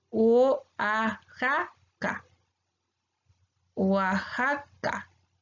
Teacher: Están separadas estas 2 vocales al inicio, la O de la A pesar de que sí están formando una sílaba.